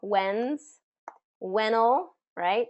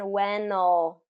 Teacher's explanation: Whenever there's that L at the end, when'll, dark L.